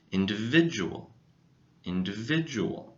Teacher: The stress goes on the middle syllable